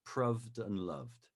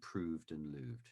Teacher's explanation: most people would say proved and loved rather than proved and looved. Shorter vowel sound for that sound